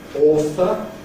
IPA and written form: ˈɔːθə (author)